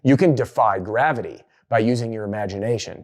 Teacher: the falling intonation delivers a feeling of authority and power